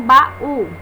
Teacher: e tá certo vejamos agora o caso do hiato cunhado Jael encontro de duas vogais que fica em sílabas separadas como a vogal ela forma sílabas sozinha o que não ocorre